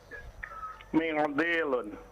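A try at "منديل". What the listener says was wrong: Tidak usah diikhfa. Mendilun biasa saja.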